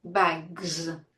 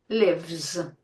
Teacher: With all vowel sounds and most voiced sounds, the sound that you will have to create is /z/, the voiced sound /z/.